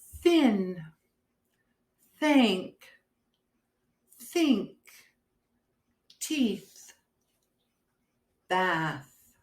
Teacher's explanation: it also makes the voiceless sound we don't use our vocal chords